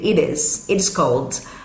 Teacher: esse T junto com o is vai virar um leve som de D